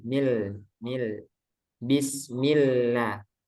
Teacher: Kemudian pada basmalah, bismillah, lamnya tipis itu.